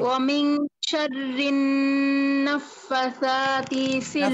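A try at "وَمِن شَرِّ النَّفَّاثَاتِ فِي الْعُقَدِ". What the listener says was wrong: টান আছে, টান আছে, ফাতেও টান আছে, সাতেও টান আছে।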